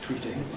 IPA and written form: ˈtwiːtɪŋ (tweeting)